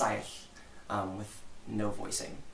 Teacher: Even though it's written with an L, you would not voice it